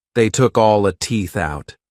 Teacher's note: pronounces this more openly and drops the final T sound